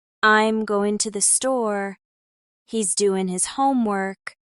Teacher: in casual speech, many Americans drop the G entirely